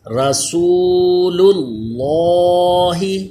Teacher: اب دیکھیے رسول، اس کا جو لام ہے یہ باریک ہوگا، لیکن لفظ اللہ کا لام یہ پر ہو جائے گا کیونکہ اس سے پہلے پیش ہے، زبر یا پیش ہو لفظ اللہ کے لام سے پہلے تو وہ پر ہوتا ہے، تو دونوں میں پہلا لام باریک دوسرا لام پر کر کے پڑھیں